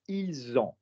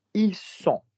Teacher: Notice they have is ils ont with a Z sound, and notice they are is ils sont with an S sound.